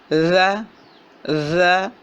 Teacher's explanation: بالکل زبان کی نوک اوپر والے دو دانتوں کے کنارے سے لگ رہی ہے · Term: ذال